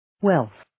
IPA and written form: welθ (Wealth)